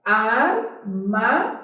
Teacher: Sílaba mais forte é o zen, está na última, não está? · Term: oxítona